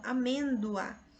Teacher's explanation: Veja que quando nós pronunciamos a palavra amêndoa, nós até o som ali do O é U, porque é uma semivogal. Amêndoa, certo?